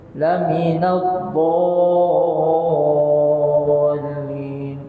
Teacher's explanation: Dhalin mad lazim musaqqal kalimi, dia dibaca 6 harakat.